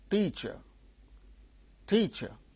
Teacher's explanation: there are two syllables three e qu in these two syllables the first syllable is uttered with a greater force that means the first syllable gains stress